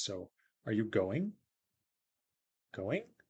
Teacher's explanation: You go up at the end, and that signals this is the kind of utterance that someone answers yes or no to.